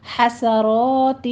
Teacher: ہا وسط حلق سے باریک سانس کی سی آواز نکلے گی